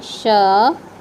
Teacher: श का उच्चारण स्थान है तालू भाग